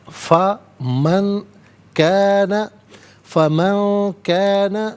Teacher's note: نون ساکن، اس کے بعد کاف حرف اخفا ہے تو نون ساکن کو اخفا کے ساتھ پڑھیں گے۔ اخفا کہتے ہیں ناک میں آواز لے جا کر گنگنانا۔